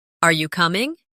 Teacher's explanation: Say, Are you ready? with a rising tone.